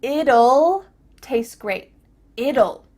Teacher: it'll taste great it'll what is happening with this contraction well when we say the contraction it will we kind of add a little you sound before the L it kind of sounds like you ll you don't so here